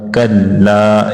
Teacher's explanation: کلا سوف تعلمون، کلا اس کے اوپر تشدید ہے، اس کو 2 بار پڑھیں گے لام کو